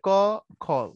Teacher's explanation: অল্প প্রাণে বাতাস কম, মহাপ্রাণের বাতাস বেশি।